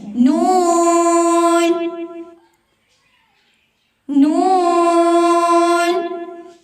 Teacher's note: हो रही है वाइब्रेशन जब हम लोग नून पढ़ते हैं तो नाक में अगर वाइब्रेशन हो रही है साउंड आ रही है नाक से फिर हमारा नून की सही अदायगी हो रही है वरना अगर